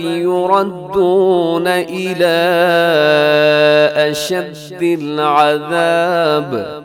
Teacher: یردون الی، اس کے اوپر چھوٹی مد ہے، حروف مدہ الگ ہے، اور اشدی کے شروع میں حمزہ الگ لفظ کے شروع میں ہے، چھوٹی مد ہے، 4 سیکنڈ تک لمبا کیجیے گا، اسے مد منفصل کہتے ہیں. اشد العذاب، آخر میں با ہے تو با کو آپ کیا کر دیجیے گا، ساکن کر دیجیے گا، یہاں وقف آپ کر سکتے ہیں.